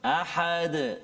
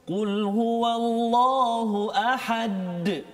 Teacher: Qalqalah yang sederhana di akhir ayat kan.